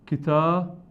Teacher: tanvin doble fatha se convierte a alif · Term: tanvin nasb